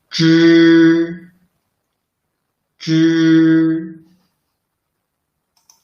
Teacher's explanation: They are pronounced by rolling up the tip of the tongue close to the hard palate. Zh should force the air out through the narrow channel between the tongue and the hard palate.